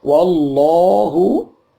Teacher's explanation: ini lam jalalah, bacaannya dipanjangkan 2 ketuk